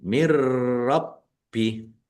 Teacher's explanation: nunnya tidak dibaca langsung masuk ke huruf ro tetapi tidak mendengung mirbih bnya dibaca dobel ada tasdidnya nya rab bih. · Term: idgham bila ghunah